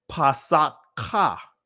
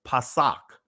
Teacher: we're dropping the ah at the end now if we didn't it would be Passat Ka right that's